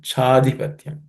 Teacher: The next word, Cha plus adhipatyam becomes chadhipatyam. Cha plus a becomes cha, longer cha.